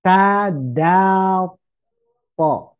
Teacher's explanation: tebalnya atau seperti O dalam bahasa Indonesia itu karena pangkal lidah diangkat